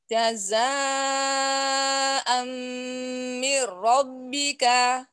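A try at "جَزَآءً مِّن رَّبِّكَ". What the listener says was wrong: Aa roknya kurang tebel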